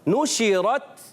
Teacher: جب شین کی ادائیگی ہوتی ہے تو کیا ہوتا ہے منہ میں آواز پھیل جاتی ہے